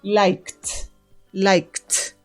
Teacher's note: que en su sonido final tengan una de estas letras la pronunciación en pasado al agregarles ustedes Ed esa pronunciación va a ser como una T